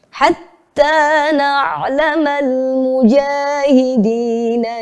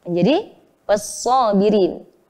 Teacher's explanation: Perhatikan pada kata al-mujahidin. Ada alif lam bertemu mim yang merupakan huruf qamariyah. Maka alif lamnya terdengar dibaca jelas ya.